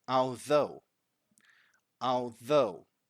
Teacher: the voiced th is what we've got here